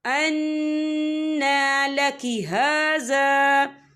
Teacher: وَجَدَ عِندَهَا رِزْقًا قَالَ يَا مَرْيَمُ أَنَّىٰ لَكِ هَٰذَا، یہ دیکھیں اَنَّا، یہاں نون مشدد ہے تو یہاں پر غنہ ہوگا